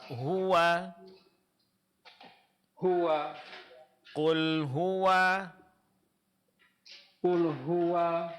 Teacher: Huwa di sini huruf wawunya Fathah baris atasnya itu disempurnakan. Caranya dengan buka kedua bibirnya.